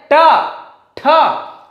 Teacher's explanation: ऊपर जीभ उठी और मूर्धा को स्टार्ट कर रही है, वहां पर मतलब छू रही है। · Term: मूर्धन्य व्यंजन